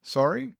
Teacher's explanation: Or simply, Sorry? with a rising tone